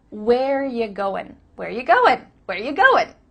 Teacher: We just changed it to ya. Ya. Not you, but ya.